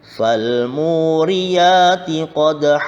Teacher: Yang pertama idhar qamariyah karena ada al bertemu dengan huruf mim, dan pada lafadz mu terdapat bacaan mad tabi'i karena terdapat harokat dhammah diikuti wawu sukun. Sedang pada lafadz qadha terdapat bacaan qalqalah sughra, huruf qalqalah dal berada di tengah kalimat